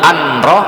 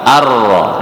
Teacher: idgham bilagunnah idgham memasukkan tanpa dengung artinya itu memasukkan Apa yang dimaksudkan jadi Nun matinya itu langsung · Nun matinya itu langsung dimasukkan ke huruf Ro Jadi ketika menyebut huruf hamzah itu tidak anroh tetapi arroh Nah · namanya memasukkan langsung memasukkan antara huruf ee Hamzah dengan huruf ra langsung nun-nya dianggap tidak ada begitu dan tanpa dengung ada orang itu bacanya didengungkan alias dilama-lama kan Ah itu enggak